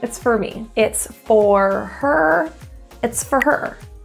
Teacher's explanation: Another reduction that native North American speakers use is the word for, F-O-R, produced as a very quick, fur, F-R. If you think of just getting rid of the vowel, fur.